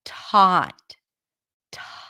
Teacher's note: at the beginning of a word at before a vowel then the T is aspirated so it feels like there is a little H right after T